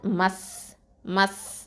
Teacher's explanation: அடுத்தது மீம் ஃபத்ஹா சீன் சுக்கூன் மஸ், மஸ். இந்த சீன்லேருந்து காற்று வெளியேறணும், ஹம்ஸ் கொடுக்கணும்